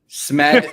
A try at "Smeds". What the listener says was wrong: It's Smeds. It's Smeds, not Smed.